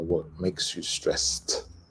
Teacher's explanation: the ED ending is a T sound